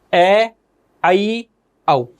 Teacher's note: अर्धविवृत स्वर के अंतर्गत ए औ, इन 3 स्वरों का उच्चारण करते हैं तो मुख विवृत स्वरों की तुलना में आधा खुलता है।